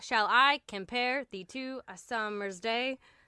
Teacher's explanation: It's 10 syllables with the emphasis placed on the second syllable. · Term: iambic pentameter